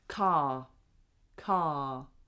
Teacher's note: if that word is on its own, we don't say the R.